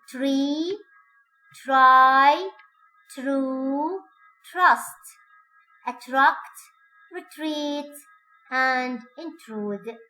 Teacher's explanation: the tongue tip is a good deal further back than usual for T.